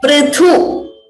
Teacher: Note again that it is not Pru, it is Pr. Prithu. Thu is Mahaprana.